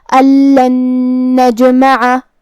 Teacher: نون میں ملا کے ایک ہی نون پڑھیں گے غنہ اور تشدید کے ساتھ